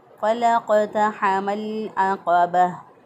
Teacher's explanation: फ़लक़तहमल अक़बह, आइन को वस्ते हलक से अदा किया और क़ाफ़ जो है इसको ज़ुबान की जड़ ऊपर के तालु के साथ लगाकर, नरम तालु के साथ लगाकर हमने क़ाफ़ को अदा किया